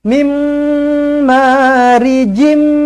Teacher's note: jumpa dengan mim sabdu rapatkan bibir dengungkan dua harakat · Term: idgham alghunnah, idgham ma'al gunnah